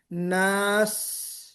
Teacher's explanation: سین کی سیٹی زیادہ تیز بجتی ہے · سیٹی بجنی چاہیے، اس کو ہم کہتے ہیں صفیر، یہ صفت صفیر کہتے ہیں